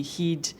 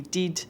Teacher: there's some changes in pronunciation for example head would be heed dead would be did